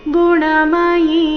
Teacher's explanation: ಇಲ್ಲಿ ಸ್ವರ ಇ ಇಲ್ಲ, ವ್ಯಂಜನ ಯಕ್ಕೆ ಈಕಾರ ದೀರ್ಘ ಇದೆ.